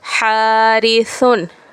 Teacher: ثا کی آواز باریک اور نرم ہوتی ہے